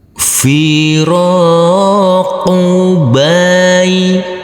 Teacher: Huruf ro dibaca panjang dengan panjang 2 harokat, karena huruf ro yang berfathah a ini bertemu dengan huruf alif yang tidak berharokat.